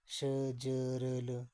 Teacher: वतर्स्य व्यंजन यानी कि दंत मूल से